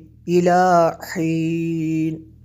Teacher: آخر پہ ایک مد ہوگی، اس کو تھوڑا لمبا کرنا ہے، 3 الف کے برابر یہاں پہ مد کریں گے جس کا نام ہے مد عارض۔